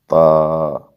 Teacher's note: آگے تا، باریک آواز کے ساتھ ہم پڑھیں گے تا۔ نوک زبان ثناء علیہ کے جڑوں میں لگتی ہے تو تا ادا ہوتا ہے باریکی کے ساتھ